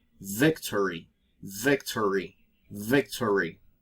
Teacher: letter v is different from spanish because we have to bite our lip our lower lip to produce the sound so it's victory victory victory this sound we certainly don't have